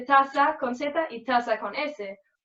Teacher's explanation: los sonidos de la S y de la Z se pronuncian S en todos los casos, como en toda Latinoamérica. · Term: ceseo